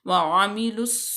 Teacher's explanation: यहाँ पे जो ये अलिफ और ये लाम ये बिल्कुल साइलेंट होंगे और लाम तारीफ़ के बाद स्वाद हरूफ शमसिया में से है तो लाम को स्वाद में डायरेक्ट मिला देंगे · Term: इदगाम